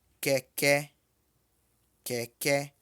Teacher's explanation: Note que as duas vogais são E, porém uma é mais baixa que a outra.